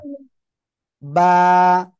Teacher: দুই ঠোঁটের ভিজা অংশ থেকে এক আলিফটা নিয়ে উচ্চারণ করব আমরা।